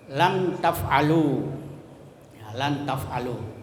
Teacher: Itu izhar syafawi, ya. Jadi disuarakan dengan terang dan jelas di bibir serta mulut tertutup